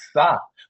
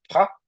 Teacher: ao invés de fa no coreano você falaria um som com um som do P com bastante ar um som do P aspirado